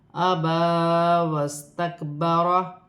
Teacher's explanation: با پر کھڑی زبر ہے، ایک الف کی مقدار کھینچ کر پڑھا جائے گا، ابا واستکبر۔